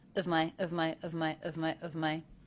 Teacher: Of my is very quick, very different than one and fave. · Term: schwa